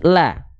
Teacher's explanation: dibaca dengan vokal a maka dia termasuk ke dalam huruf yang karakternya tipis